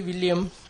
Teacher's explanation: Don't forget the S at the end. It's pronounced like a Z because it comes after the M, which is a voiced consonant.